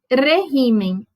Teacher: regimen, a sílaba tônica é o re